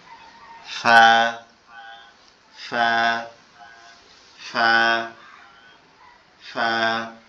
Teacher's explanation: উপরের দুই দাঁত আমাদের নিচের ঠোঁটের সাথে লাগবে।